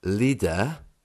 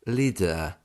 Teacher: in the south of england if we look at the word leader r is almost whisked away leader but in the north that r sound can become leader